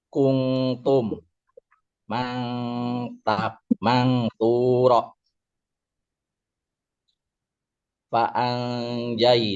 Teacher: antara izhar dan idgham disertai dengung selama dua harakat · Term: ikhfa